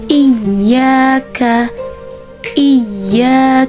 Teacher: pada ayat ke-5 kesalahan yang sering ditemukan yaitu pada ya bertasydid cara membaca ya bertasydid ini dengan cara dinabar atau dihentakkan